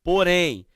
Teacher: a indicação nasal é tão forte, que mesmo havendo a presença do acento agudo, a pronúncia ela é o quê? Fechada. Ela é nasal. Ela ressoa no palato, no céu da boca, tá certo? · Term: ditongo